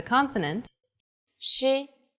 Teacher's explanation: it sounds like the sh in english only with flatter lips